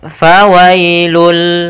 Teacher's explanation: Pada dasarnya tanwin itu an, in, ataupun un itu adalah bunyi nun sukun, bunyi nun yang dimatikan atau bunyi n. Maka ketika dia masuk, bunyi n-nya hilang, langsung masuk ke hurufnya yaitu bunyi lam. Maka fawailul, bukan lagi fawailun tapi fawailul lil musallin. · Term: idgham bila gunnah